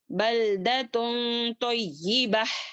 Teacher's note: اپنی آواز کو ناک میں چھپاتے ہوئے پڑھیں گے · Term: اخفا